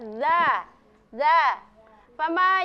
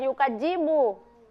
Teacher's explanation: ujung lidah ya landasannya gigi seri atas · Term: huruf za